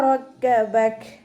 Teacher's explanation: റക്കബക് കാഫ് ഉച്ചരിക്കുമ്പോൾ ചെരിച്ചിട്ട് ഉച്ചരിക്കാൻ ശ്രദ്ധിക്കുക. റോ ഫതഹയാണ്, ഉയർത്തി ഉച്ചരിക്കുക